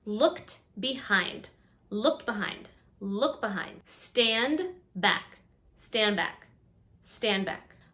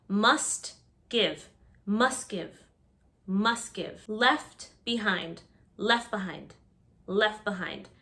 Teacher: notice in all of these words the final t or d is completely lost